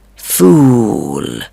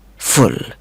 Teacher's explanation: اس میں بھی ہمیں کمپیریزن کرنا پڑے گا، جیسے فول اور فل. فول میں او لانگ ساؤنڈ ہے، جبکہ فل میں او ساؤنڈ بہت ہی شورٹ ہے